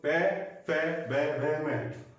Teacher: ठीक है, अब बचा पे पे बे बे में, पे पे बे बे में, बोलो पे पे बे बे में। आपको देखो होठ आपस में स्पर्श करेंगे, पे पे बे बे में, से हो गया ओष्ठ।